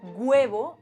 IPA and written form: 'gwe.β̞o (huevo)